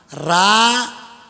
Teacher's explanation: राम म्हणताना जिभेचं व्हायब्रेशन होतंय आणि तोंडातली पोटातली सगळी हवा बाहेर जाते राम म्हणताना रा आणि जेवढं पाप केलं तेवढं हवे सोबत बाहेर